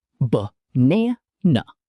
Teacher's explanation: Words like banana, b-na-na. The first and last vowels are both schwa sounds.